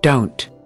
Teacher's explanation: We can clearly see that the vowel abruptly starts, which is indicative of a stop consonant coming before it.